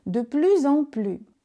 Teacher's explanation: Avec la liaison, le premier S se prononce comme un S sonore Z. Le second S à la fin ne se prononce pas.